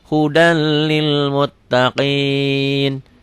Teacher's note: Idgham tanpa dengung. Hudal masuk aja melebur.